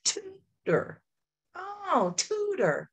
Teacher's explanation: On that first syllable, my mouth opened wider. I emphasized it. I accented it.